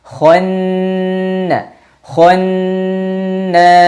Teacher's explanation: huruf nun tasydid didengungkan dua harakat